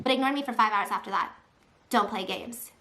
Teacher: now suddenly gasping for air all breathy and broken